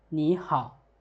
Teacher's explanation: มาเบิ่งนำกันโอเคอันนี้เป็นพยัญชนะเดียวจะมีคำเว้า1คำเว้าเท่านั้นแล้วตัวต่อมาจะเป็นพยัญชนะคู่จะมี2คำเว้า2คำว่าง่าย2คำโอเคแล้วเฮามาเบิ่งตัวที่4นี้ตัวที่4นี้两个声两个三声音节的连读变调两个三声音节的连读变调แปลว่าการเปลี่ยนเสียงในการอ่าน2พยางค์เสียง3ที่เชื่อมต่อกันโอเคเฮาเบิ่งนำกันเสียง3ที่เชื่อมต่อกันอยู่ได้โอเค▁อยู่ในนี้เขาจะว่า 当两个第三声音节连读时第一个音节变为第二声 แปลว่า3加3变为2加3比如你加好变为你好但是注意时要标原调พูดนำกันอ